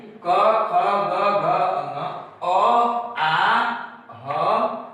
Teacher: इन वर्णों को बोलते समय हमें अपने कंठ का यानी गला का ज्यादा प्रयोग करना पड़ता है, यानी गले में ज्यादा आघात उत्पन्न होता है, जिसके कारण इसका उच्चारण, इन वर्णों का उच्चारण स्थान कंठ हो गया।